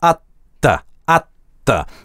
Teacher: в быстрой речи в at the звучит ни что иное, как двойное русское т